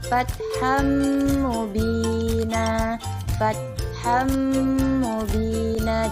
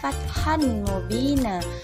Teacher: Fathan mubina itu salah ya teman-teman. Jadi dileburkan kepada huruf mim, seolah-olah huruf mimnya itu tadi bertasydid. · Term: idgham bi gunnah